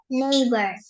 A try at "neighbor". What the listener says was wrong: That's it.